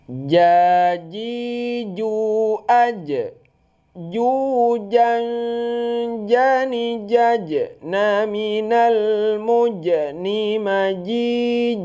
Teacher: Dia itu huruf jahar. Kalau jahar itu tidak keluar angin. Jangan sampai kita baca jim jim.